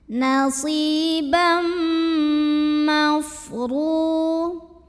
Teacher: Berikutnya ada idgham bi gunnah karena ada tanwin fathah yang ketemu dengan huruf mim. Maka tanwin fathah yang biasanya n bunyinya langsung jadi m, jadi masukkan langsung ke huruf mim disertai dengung.